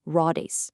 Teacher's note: The hidden D in the word for wheel suddenly reappears when spoken. It becomes raudes.